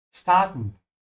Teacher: I'm saying st with a sh because the s comes before a t, yeah? And I'm also opening my mouth on the R.